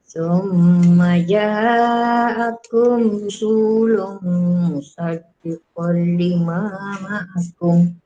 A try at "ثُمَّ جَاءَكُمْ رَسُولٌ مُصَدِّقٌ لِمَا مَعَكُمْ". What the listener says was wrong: Summa ja'akum ra bukan ru. Rasulum. Musaddiqul lima ma'akum. Musaddiqul. Kalau kol baris atas ni, kul baris depan.